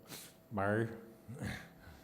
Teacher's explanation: The Burushaski word is something like bai. It's a strange sound, kind of a fricative, lateral, yeah, bar, something like that.